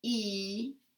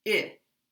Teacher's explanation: this vowel E is tense, and this vowel I is lax. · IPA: i and ɪ